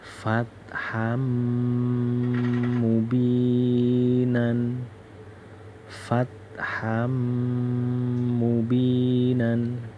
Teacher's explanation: Namanya idgham bi ghunnah, Namanya idgham bi ghunnah. Bacanya harus langsung masuk ke huruf mim.